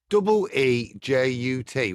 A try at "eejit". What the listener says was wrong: IT. It's not UT.